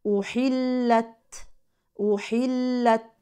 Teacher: كلمه احلت التاء ساكنه سكونا لازما اذا وصلا او وقفا فيها الهمس